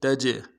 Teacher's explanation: تا کو جیم کے ساتھ ملانا ہے، جیم جب ساکن ہو تو قلقلہ ہوگا، قلقلہ کریں گے ، تج، را کو باریک ادا کرنا ہے، یا کے اوپر